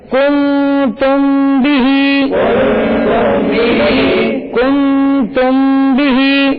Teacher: میم ساکن کے بعد با آ رہا ہے، ٹھیک ہے، تو اخفاء شفوی کریں گے